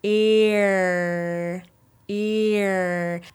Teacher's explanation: As your tongue moves back, it starts to sound like an R sound.